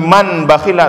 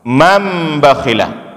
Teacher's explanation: Itulah yang disebut dengan iqlab. Artinya kita balikkan nun sukun menjadi mim sukun.